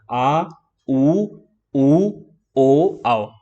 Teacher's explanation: अब आप देखेंगे थोड़ा गले का यूज हो रहा है यानी कि अंदर से आवाज आ रही है थोड़ा पीछे की साइड से आवाज आ रही है यानी कि पीछे के भाग का ज्यादा इस्तेमाल हो रहा है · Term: पश्च स्वर